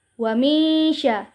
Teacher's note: Di sini kita bertemu lagi dengan hukum bacaan ikhfa ausad, yaitu apabila nun sukun bertemu dengan salah satu huruf ikhfa yaitu sya, maka cara membacanya dibaca samar-samar sambil berdengung, yaitu tidak terlalu jelas dan tidak terlalu dimasukkan